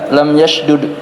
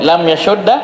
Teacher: Yasudda namanya idgham. Dalnya ditasydid.